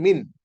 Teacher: After noon sakin came letter of ikhfa, jim. So the noon sakin will be recited with a slight nasal sound with the slight ghunna.